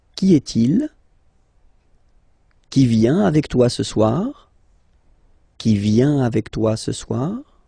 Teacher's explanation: If you pronounce them normally, remember that you will have to raise your voice a little bit at the end of the question